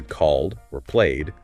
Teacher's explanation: if it's a voice sound like in called or played then the Ed sounds like a d